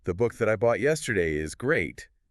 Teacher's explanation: No breaks, no pitch drop. The momentum carries straight through because the information is structural, not decorative. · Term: defining clause